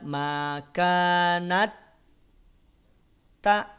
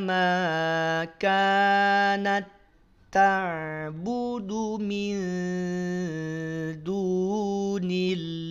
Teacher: Nah, di sini mutamasilainnya tak perlu ditahan. Cukup masukkan saja tak sukun pada huruf tak berikutnya, tidak makanat tak. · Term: idgham mutamatsilin